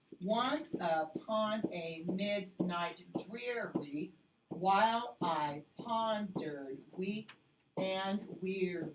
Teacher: you're stressing those words you probably have the wrong Rhythm but our pattern is stressed unstressed stressed unstressed · But our pattern is stressed, unstressed, stressed, unstressed, and so on. Don't stress and.